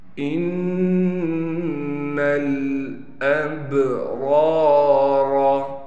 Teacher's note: نون پر غنہ کریں گے نون مشدد ہونے کی وجہ سے۔ اس کے بعد نون کو ہم نے لام سے ملا دینا ہے۔